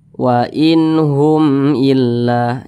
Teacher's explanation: Huruf H termasuk kepada huruf izhar halqi ya. Jadi dibaca jelas dan tidak berdengung.